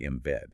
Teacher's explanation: Take the phrase in bed, spelled I-M space B-E-D. Because of the B in bed, the N in becomes an M. It sounds exactly like in bed.